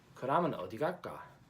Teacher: the 리을 consonant in the 받침 of 갈까, the backwards S consonant, is not pronounced